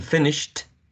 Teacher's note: f is a voiceless, fricative, labiodental consonant sound